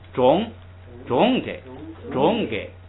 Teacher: 因为后边你要加一个给，你要降下来，所以它很自然，对，很自然有一个往下降的趋势，就像三声 。但是呢，你的心里头知道是二声就行了，中给，所以他有这说的时候会有这